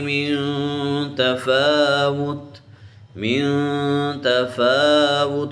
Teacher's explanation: فا کو کھینچیں گے، فا کے اوپر کھڑی زبر